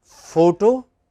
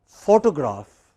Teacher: in both cases you have a stress on the initial syllable